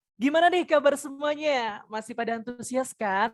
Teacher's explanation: Jadi ada tinggi, rendah lagi, tinggi lagi.